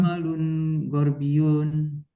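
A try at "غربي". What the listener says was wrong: Tapi yunnya nggak usah dibaca, harusnya Ustaz Gorbi gitu aja Ustaz. Yunnya nggak usah dibaca.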